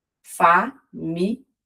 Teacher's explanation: no português do Brasil nós temos a preferência pela pronúncia enquanto palavra paroxítona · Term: ditongo crescente